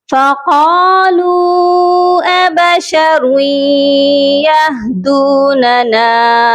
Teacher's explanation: رسلہم بالبینات فقالوا، یہاں پر دیکھیے واو کے اوپر مد ہے، یہ مد منفصل ہے، اس کو 3 الف کے برابر لازمی لمبا کر کے پڑھا جائے گا